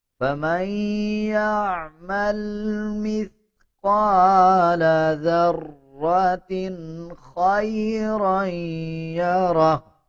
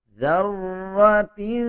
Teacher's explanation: لوگ اس کو ذرّتیں اس طرح پڑھ دیتے ہیں بلکہ اس میں غنہ یا اخفا نہیں کیا جائے گا